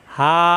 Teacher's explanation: হা মুখ থাকবে কন্ঠনালীর শুরু থেকে